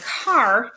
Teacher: So we have a word like car, where the quality of the A changes so dramatically that we consider R-controlled vowels to be their own phoneme type